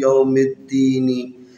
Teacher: آپ نے میم کو ڈائریکٹ جو ہے نا اس دال کے ساتھ ملانا ہے، الف کو بھی نہیں پڑھنا ہے، لام کو بھی نہیں پڑھنا ہے